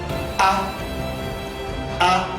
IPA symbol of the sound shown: æ